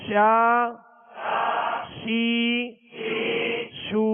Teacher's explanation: شین کو جب ادا کریں گے تو آواز اس کی شین کی آواز منہ میں پھیلتی ہوئی محسوس ہو